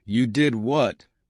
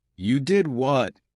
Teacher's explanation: imagine saying you did what with a rise in your voice